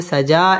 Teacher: সাজা এক আলিফ টান দিয়ে ওয়াকফ করতে হবে